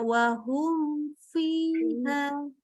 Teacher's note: Fa itu kalau mim adalah bibir ketemu bibir, kalau fa adalah gigi ketemu bibir bawah.